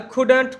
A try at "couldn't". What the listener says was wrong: Don't say couldn't. We are not releasing the T, right? Couldn't.